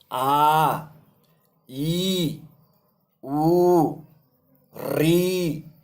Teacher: इनमें दो मात्राओं का समय लग रहा है इसलिए दीर्घ हो गए